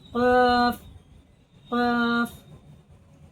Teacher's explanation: जुबान की जड़ ऊपर के तालू से जुबान की जड़ नरम हिस्से से लगेगी